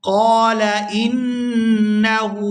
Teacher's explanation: یہاں نون مشدد پر غنہ کریں گے اور آگے ہا کو الٹا پیش کی وجہ سے کھینچ کر ادا کریں گے۔